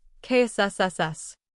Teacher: sound place your hand on your throat as you say and notice there is no vibration this happens because KS is an unvoiced sound